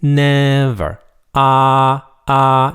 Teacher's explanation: For example, when you say the word never, never, right? It sounds like a first tone in Chinese. Never. Ah, ah. It's a high flat tone.